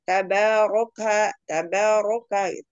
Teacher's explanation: Tabaroka ro berharokat fathah baca tafhim